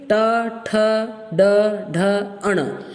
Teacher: मूर्धन्य माने ऊपर छूती है आपकी जबान, ऊपर वाले पोर्शन को अंदर